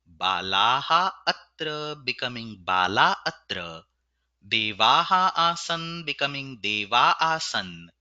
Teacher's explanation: The eighth rule. It is about the visarga occurring after the letter A. Such a visarga gets removed when it is followed by a swara or a mrudu vyanjana.